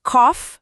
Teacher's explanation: Em algumas palavras, esse GH virou o som de F, como em cough, a tosse.